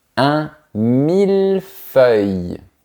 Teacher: Dans la première partie, on prononce bien le son de la lettre L, mais pas dans la deuxième.